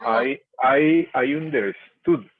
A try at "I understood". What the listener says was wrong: Beautiful, and that's the past tense.